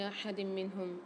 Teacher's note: لا نفرق بین احد منہم، احد منہم میں دال کے نیچے 2 زیر آ رہے ہیں، 2 زیر کی تنوین کے بعد ادغام مال غنہ والا قاعدہ ہوگا، غنہ کے ساتھ ادغام کر کے پڑھیں گے۔ نون ساکن کے بعد ہا آ رہی ہے اظہار حلقی کے 6 حروفوں میں سے، یہاں گناہ نہیں کریں گے۔